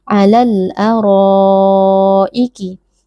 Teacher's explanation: Jadi ra di sini dibaca panjang 4 atau 5 harokat. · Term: mad wajib muttasil